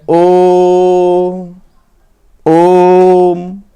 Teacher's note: ओ जो है इसको हम लगभग 3 बार बोल रहे हैं, तब जाकर म को बोल रहे हैं